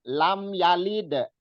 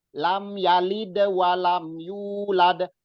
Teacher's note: Lam yalid. Cuman dalnya dipantulkan.